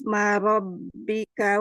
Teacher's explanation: Ro dibaca tebal atau tafhim karena berharokat fathah